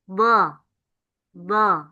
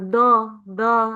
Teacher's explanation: Yang betul adalah tepi lidah. Do. Nah, ini yang melebar.